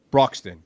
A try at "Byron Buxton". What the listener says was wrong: Buxton. Buxton. Buxton. No R. No R. No Bruxton.